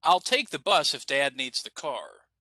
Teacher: At the end of the sentence, we're going to go down, right?